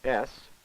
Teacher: the noise results from forcing air under pressure through a constriction in the tract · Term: fricative sounds